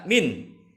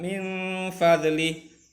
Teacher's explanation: Maka nun sukun atau tanwin harus dibaca samar dan dengung. Min fadlih, jangan dibaca min, berarti tidak ada ikhfa-nya, tapi harus disamarkan min fadlih.